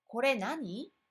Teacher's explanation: In this case, the final で す か disappears and the question simply ends with the question word with a rising intonation.